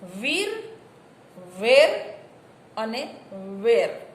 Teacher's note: જીભના અગ્રભાગથી ઉચ્ચારાતા 3 સ્વર છે. ઈ, એ અને વિવૃત એ અગ્રભાગથી.